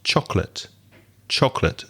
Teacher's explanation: it only has two syllables and you pronounced it with three · stress the first syllable